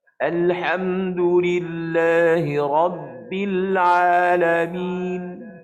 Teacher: Masa kita sebut Rabb tu, dia macam tersekat suara. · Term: syiddah